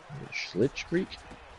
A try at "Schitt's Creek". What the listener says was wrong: No L. Schitt's Creek.